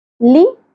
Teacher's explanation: لی، باریک ہوگا، شارٹ ہوگا، زیادہ نہیں کھینچنا